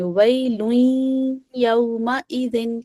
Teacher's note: ویلوین، ٹھیک ہے، نون کی ساؤنڈ رہے گی لیکن نون ہم اس کو ظاہر کر کے نہیں پڑھیں گے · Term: ادغام